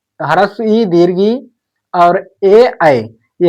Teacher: ये हमारे चार ऐसे स्वर हैं जिनको बोलने में हमारा जीभ का आगे वाला भाग प्रयोग में आता है, इन्हें हम अग्रस्वर कहते हैं।